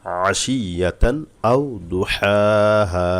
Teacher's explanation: আলিফ হলো ইজহারের একটি অক্ষর স্পষ্ট করে পড়তে এখানে গুণা হবে না